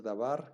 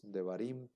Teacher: En este caso es un sheva simple, móvil, que sí se va a pronunciar porque va al inicio de la palabra